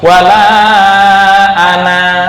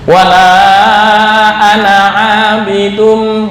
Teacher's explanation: Mustatil ketika waqaf dibaca panjang, contoh wala ana, tapi ketika diwasolkan menjadi pendek, wala ana abidum, nggak boleh dibaca wala ana abidum, salah.